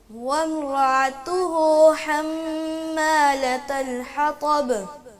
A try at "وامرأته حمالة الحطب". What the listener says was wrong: کچھ بہتر ہو گیا ہے. ابھی وہ عین والا مسئلہ ٹھیک نہیں ہو رہا. بیٹا اس پہ محنت کریں.